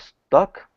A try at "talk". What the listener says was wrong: Okay, when you say talk, try to open it up a little bit. It's not talk, it's talk.